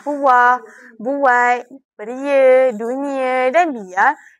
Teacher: setiap vokal ini diucapkan secara terpisah dan mempunyai getaran bunyi yang tersendiri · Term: vokal berganding